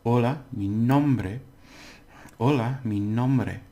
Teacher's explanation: Now because it ends in a vowel, nom is the accent one.